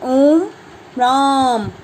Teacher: जिन स्वरों के उच्चारण में दीर्घ स्वर से भी अधिक समय अर्थात 3 मात्राओं के बराबर समय लगता है, इनका प्रयोग पुकारते समय किया जाता है। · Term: प्लुत स्वर